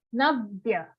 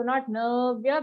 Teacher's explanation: We will not drag the na sound. It has an aghat, so we have to put extra force on it.